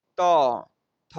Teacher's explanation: ल, त थ, द, ध न ये जितने शब्द आप बोलेंगे इसमें आपका क्या होगा? जो दांत जीभ जो है वो दांत में बिल्कुल सटेगा